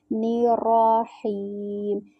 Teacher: ہا جو ہے یہ والی وسط الحلق سے یعنی حلق کے درمیانی حصے سے ادا ہوتی ہے